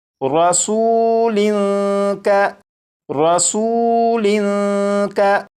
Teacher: اب آپ یہاں پر غور کریں کہ اس لفظ کے آخر میں لام کے نیچے 2 زیر ہیں، یعنی تنوین ہے، اور جب اس لفظ کو پڑھا تو لام پر غنہ نہیں کیا تھا، لیکن جیسے ہی آگے کاف کو پڑھوں گا تو پھر پیچھے سے ملا کر جب پڑھوں گا تو یہاں پر لام پر غنہ کر کے پڑھوں گا